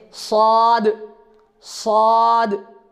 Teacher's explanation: صاد موٹا کیسے پڑھا جاتا ہے، یعنی ہونٹ کو تھوڑے گول کر کر پڑھنا ہے